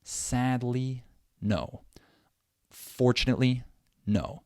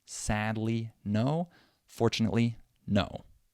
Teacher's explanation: It's basically the same amount of time between that first stressed syllable and the last, but in the second phrase, there are 3 syllables, so I have to say them really fast. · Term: stress timing